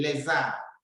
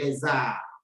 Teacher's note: and you read it lesser since R begins with the vowel you change the pronunciation of the S to be z z and you join the two words